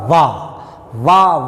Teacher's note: जब बोलेंगे तो ऊपर का दांत नीचे का होठ, इसलिए इसको क्या कहते हैं, दंतोष्ठ। दांत और होठ का इसमें सहारा लिया गया है मित्रों।